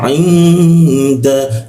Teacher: Ketika nun mati bertemu da maka ditahan berdengung, ditahan 2 ketukannya. Ain da. Nah, seperti itu dengungnya di huruf da di sini.